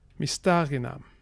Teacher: Note that the stress here is on the antepenultimate syllable, sta.